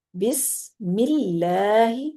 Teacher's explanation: اللہ کا لام باریک ہو گیا کیونکہ پیچھے میم کے نیچے زیر ہے